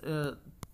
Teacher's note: तो ता का जो उच्चारण स्थान है वो है दंत है, तो दंत इस ता बोलते समय हमारी जो जीभ है वो दांतों से टकरा रही है